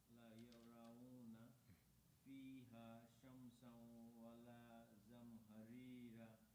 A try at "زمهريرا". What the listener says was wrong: See the raw heavier? The second one. Raw. Think raw meat, for example. Zamharira.